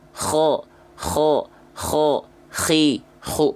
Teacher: coba teman-teman lafalkan huruf Kho rasakan dari tenggorokan paling atas